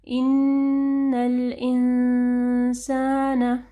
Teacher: نون ساکن کے بعد جو ہے سین ہے، تو یہاں پہ اخفا غنہ ہوگا